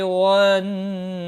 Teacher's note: لام ساکن کو ہلانا نہیں، تا کے اوپر کھڑی زبر ہے، ایک الف کے برابر کھینچ کر پڑھیں گے۔ والنبیین نون مشدد پر غنہ ہوگا، بی یا مدہ ہے، والنبی یا کے نیچے کھڑی زیر ہے، یا مدہ نہیں ہے، کھڑی زیر ہے، ایک الف کے برابر کھینچ کر پڑھیں گے، اور وقف کی صورت میں نون ساکن پڑھا جائے گا، وقف بالاسکان ہوگا، 3 سے 5 الف کے برابر کھینچ کر وقف کریں گے۔